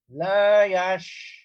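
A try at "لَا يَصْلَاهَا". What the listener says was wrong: Nah, bukan la yash Bapak. La yas. Dia seperti sin. Makhrajnya seperti sin. Akan tapi dia ditebalkan. Naiknya suara ke langit-langit. La yaslaha.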